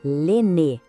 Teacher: O som final é bem nasal, ne. O Z no final, mudo, a gente não pronuncia.